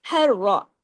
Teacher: ह को गले से र को हैवी